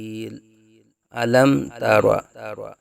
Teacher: میم ساکن کے بعد حرف با اور میم کے علاوہ تا آ رہا ہے، تو یہاں اظہار شفوی کا قاعدہ ہوگا، یعنی میم ساکن میں غنہ نہیں کریں گے۔